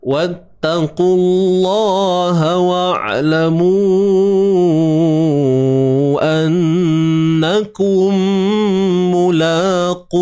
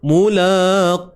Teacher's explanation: Huruf qaf pada depan qu kena tebal selamanya.